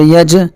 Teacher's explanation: جیم ساکن ہے اور یہ جیم قلقلہ کے 5 حرفوں میں سے ہے، اس لیے اس کی آواز ٹکر کھا کر الگ ہو جائے گی